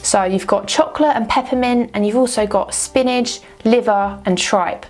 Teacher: And also the T gets dropped. This is the stereotypical Cockney accent from London